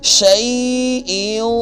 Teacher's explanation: شین کے اوپر زبر ہے، اس کے آگے یا ساکن ہے، یہاں پہ یا لین ہے، اس کو بھی لمبا کریں گے ایک الف کی مقدار یا ساکن کی وجہ سے